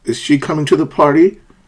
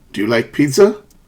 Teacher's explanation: a rising intonation it's used in questions and when somebody's not sure